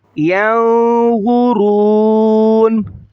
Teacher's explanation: رکیں گے تو نون کی زبر کو ظاہر نہیں کریں گے